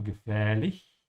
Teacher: There's an ä here and then it's a little bit longer because there's an h after it.